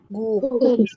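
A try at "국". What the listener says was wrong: guk. Oke, jadi tidak dibaca sebagai guknya pakai G ya. Guk, guge itu enggak, tapi langsung guk tegas huruf K biasa. Guk.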